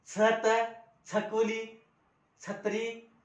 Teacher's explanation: मराठीमध्ये छ जो आहे तो कायम तालव्यच वापरायचा आणि दंत तालव्य वापरायचा नाही